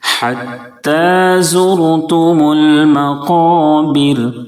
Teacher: وقف کریں گے تو را ساکن ہو جائے گی، اور را ساکن سے پہلے با کے نیچے زیر ہے، اس لیے را کو باریک پڑھیں گے، پتلا پڑھیں گے